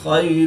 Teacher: یا ساکن سے پہلے زبر ہے، تو یا لین اس کو لمبا نہیں کریں گے